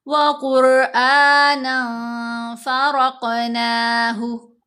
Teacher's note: وَقُرْآنًا فَرَقْنَاهُ، یہاں پر بھی دیکھیں را ساکن ہے، را ساکن کے پہلے قاف کے اوپر پیش ہے، تو ہم نے قاف کو بھی موٹا پڑھنا ہے، را کو بھی موٹا پڑھنا ہے۔ را تو موٹا پڑھا گیا کہ اس سے پہلے پیش آگے، جبکہ قاف حروف مستعالیہ میں سے ہے، بولڈ لیٹر ہے، ہمیشہ ہی موٹا پڑھا جائے گا۔